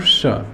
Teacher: जिसको हम तालव्य श भी कहते हैं क्योंकि इसका उच्चारण स्थान तालु होता है